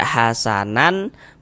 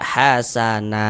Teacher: Nah, kemudian tanwinnya itu ditukar menjadi fathah. Yang seharusnya dibaca hasanan, maka kita baca hasana. Nah, dipanjangkan 2 harokat. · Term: mad iwad